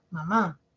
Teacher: la mayor fuerza de voz eh recae en la última sílaba mamá y recae en la última vocal o sea específicamente en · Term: acento, el acento